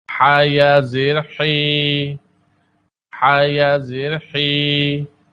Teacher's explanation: حا کی ادائیگی حلق کے درمیانے حصے سے ٹھنڈے سانس کے ساتھ ہوتی ہے